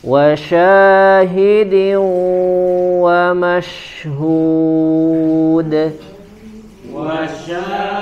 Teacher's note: Ada tambahan gunah ditahan dulu membacanya ya kemudian suara masuk ke dalam hidung